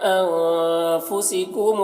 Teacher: انفسکم کے نون میں اخفا ہو رہا ہے، نون کی آواز کو ناک میں چھپا کر ایک الف کی مقدار کھینچ کر پڑھیں گے